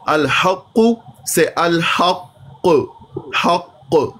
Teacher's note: جیسے الحق، جی سر، قاف پر شد ہے، وقف کی صورت میں پیش تو ختم ہو گئی لیکن شد رہے گی